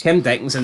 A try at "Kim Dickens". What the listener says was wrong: No, just Dickens, not Dickinson.